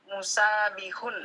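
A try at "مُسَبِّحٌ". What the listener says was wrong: Sa-nya pendek, tasdidkan ba-nya. Musabbihun, gitu ya? Musabbihun. Jadi, sa-nya bedakan antara sa-nya panjang dan dimasukkan ke huruf ba, ditasdidkan ba-nya, beda ya. Antara musabihun dengan musabbihun itu berbeda.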